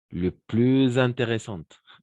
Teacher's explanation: Oui, dans ces cas-là, on va faire on va faire la liaison, d'accord? La liaison, c'est-à-dire lier. Lier le S avec le I.